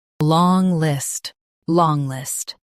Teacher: Stress long and keep list light.